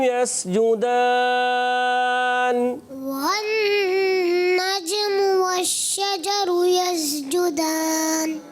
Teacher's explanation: جیم کی ادائیگی کلیئر اور چے جیسی نہیں ہونی چاہیے